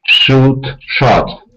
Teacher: So, the vowel sound shortens to shot.